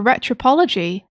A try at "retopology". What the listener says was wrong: Retopology. You said retropology.